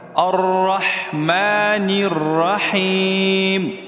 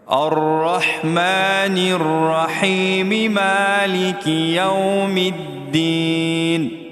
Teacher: اگر ہم یہاں نہیں ٹھہرتے ہیں، اس آیت کو دوسری آیت کے ساتھ ملاتے ہیں، تو میم کا زیر پڑا جائے گا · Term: وصل